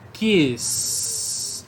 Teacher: A minha corda vocal não vibrou no final de kiss · Perceba que nesse Szinho não tem vibração nenhuma. Tem vibração no ki, mas no restante não. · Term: voiceless sound